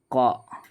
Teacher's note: നാവിൻ്റെ മുരടും മേലെ അണ്ണാക്കും